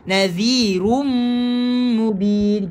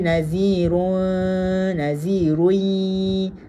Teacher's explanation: Idgham ma'al gunnah, dengungnya memasukkan.